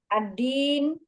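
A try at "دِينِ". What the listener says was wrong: Nggak pakai alif. Waliyadin, boleh langsung waliyadin agama.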